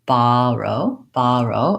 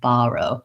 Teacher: I use an open, relaxed ah. My tongue is flat on the bottom of my mouth, and I don't have any lip rounding, borrow. However, you may find that it's easier for you to do a little bit of lip rounding in this word, and you might say it more like a caught law vowel.